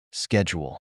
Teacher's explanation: it's often pronounced with a sh sound like schedule in contrast Americans typically pronounce it with a hard k sound